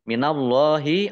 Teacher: Allahnya dibaca tebal karena harokat di depannya fathah. Lam fathah berdiri mat tabi'i 2 harokat.